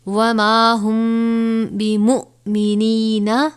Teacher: میم ساکن کے بعد حرف با آیا ہے تو یہاں پر اخفاء شفوی یعنی ہم غنہ کر کے پڑھیں گے